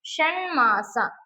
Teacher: ಬಿಡಿಸೋದು ಷಟ್ ಪ್ಲಸ್ ಮಾಸ ಟ ಕ್ಕೆ ಮ ಅನ್ನುವಂತಹ ಅನುನಾಸಿಕ ಪರವಾಗಿದೆ ಆದರೆ ಟ ಕ್ಕೆ ನ ಅನ್ನುವಂತಹ ಒಂದು ಅನುನಾಸಿಕ ಅಕ್ಷರ ಆದೇಶವಾಗಿ ಬಂದಿದೆ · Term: ಅನುನಾಸಿಕ ಸಂಧಿ